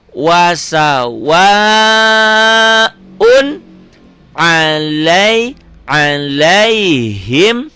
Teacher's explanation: Ini tanda ini manjangin waw ini. Yang asalnya tadi wasawa satu alif, dua ketukan, berubah menjadi lima ketukan atau 5 harokat atau 2 alif setengah.